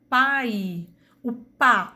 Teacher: Seu som é menos sonoro quando acompanhado de uma vogal, como no exemplo da palavra pai. O pá, o A tem o som forte e o I é a minha semivogal